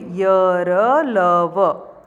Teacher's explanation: तो इसमें जो जीभ होती है वो मुख के किसी भाग को स्पर्श नहीं करती है। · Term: अंतस्थ